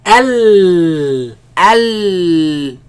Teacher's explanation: The sound escapes from the sides. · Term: lam